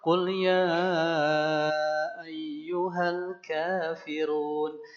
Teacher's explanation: Ya-nya itu dibaca 4 harokat. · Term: mad jaiz